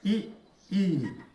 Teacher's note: इ ई का उच्चारण स्थान तालु से